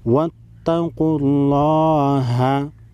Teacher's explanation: قف حروف مستعلیہ ہے، موٹا پڑھیں گے. لفظ اللہ کے لام کو بھی موٹا پڑھیں گے.